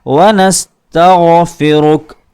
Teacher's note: اللہم انا نستعینک ونستغفرک تا کے بعد لفظ غائن ہے، غائن کو پر کیا جاتا ہے، ونستغفرک را کے اوپر پیش ہے جس کی وجہ سے ہم را کو پر کریں گے